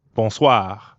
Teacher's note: we've got that really light gargling in the throat again